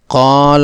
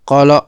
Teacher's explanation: مد طبعی ہونے کی بنیاد پر اس کی مقدار 2 حرکات کی ہوگی۔ اس کا درست لفظ قال ہے، اس الف کی مقدار کو کم کرتے ہوئے اسے قال پڑھنا غلط ہے۔